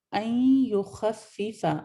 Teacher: خا آپ کا صرف ہیوی ہے، باقی تمام آپ کے حروف لائٹ ہیں